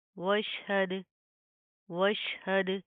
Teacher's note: दाल के ऊपर जज्म है, कलकला करेंगे